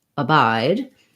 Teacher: the i diphthong gliding between the ah open and the reduced and laxed i · so in abide we have second syllable stress so our clear vowel is going to be on the letter